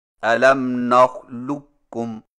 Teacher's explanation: قاف کی آواز کو بالکل ختم کر کے صرف ایک کاف مشدد سے پڑھیں، یعنی اس طرح الم نخلقکم، اس کو ادغام تام کہتے ہیں۔